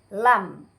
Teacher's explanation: Pada makhraj ini keluar huruf lam. Lam, ujung lidah bertemu dengan langit-langit atas yang berhadapan dengan ujung lidah itu sendiri